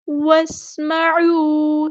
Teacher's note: سین کی سیٹی ہم واضح کریں گے